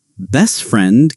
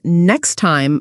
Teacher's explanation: Sometimes the t sound almost vanishes. Best friend can sound like best friend. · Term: disappearing sounds